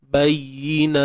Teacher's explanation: bayi huruf ya, jangan tahan suara. Bayi rakhawah, suara mengalir.